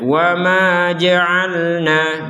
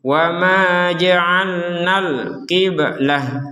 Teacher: Kalau kita gabungkan na kepada kata berikutnya, karena kata berikutnya diawali alif lam, maka panjangnya na menjadi hilang